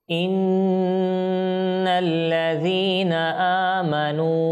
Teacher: প্রিয় আমাদের দর্শকবৃন্দ, দেখুন এখানে আমরা যখন এই আয়াতটা তিলাওয়াত করব, তো প্রথমে দেখুন এখানে নুন তাসদীদ গুণনা করতে হবে আমাদেরকে